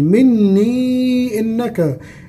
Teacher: فتقبل مني غنة بمقدار حركة مني إنك، هنمد بأربع مقدار أربع حركات، علامة مد بعديها إيه؟ همزة